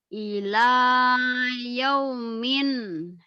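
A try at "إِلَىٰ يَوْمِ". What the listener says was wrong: ila yaumi, jangan yaumin. Kan barisnya satu. Kalau satu jangan yaumin. Kalau dua baru yaumin. Yaumi, nggak ada minnya.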